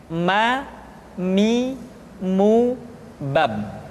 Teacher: huruf ma diucapkan dengan cara merapatkan dua bibir.